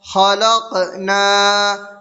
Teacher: خلقنا، خا زبر خا، لام قاف زبر لق، خلق، نون الف زبر نا، خلقنا، قاف حروف قلقلہ میں سے ہے اور قاف پر جزم ہے تو اس میں قلقلہ ہوگا